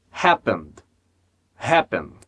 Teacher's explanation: Então conecto o D o N, conecto o N ao D.